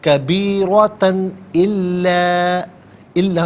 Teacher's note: تا پر دو زبر کی تنوین ہے، اس کے بعد حرف حلقی حمزہ آ رہا ہے تو دو زبر کی تنوین کو اظہار کے ساتھ پڑھیں گے، غنہ یا اخفا نہیں کیا جائے گا. کبیرتن الا میں آپ دیکھیں الف مدہ اوپر مد کی علامت، مد منفصل کہتے ہیں، مد جائز بھی کہتے ہیں.